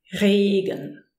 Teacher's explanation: The German R from the throat, the R, is fairly close to the French R. So if you speak French, you might be used to it a bit more already.